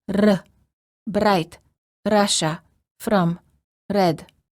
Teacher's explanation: Many languages have what is called a rolling R, where the tip of the tongue touches the gum ridge, similar to the D sound, but with a quick and repeated motion.